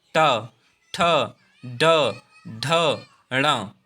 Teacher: जीभ जो है हमारी वो हमारे मूर्धा में टकराती है। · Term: मूर्धन्य व्यंजन